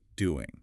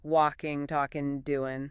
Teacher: in very common casual speech that final G sound often gets dropped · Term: dropped G